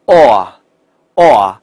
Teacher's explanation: 如果没有卷舌的话，它的嘴巴是在不断扩大的过程，是从 o 到 a